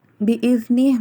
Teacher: ذال کو نرمی سے ادا کریں گے، سیٹی کی آواز نہیں نکلے گی